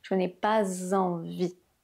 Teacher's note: ce s qui se transforme en zzz · liaison entre le « pas » et le « envie », ce « s » qui se transforme en son « z »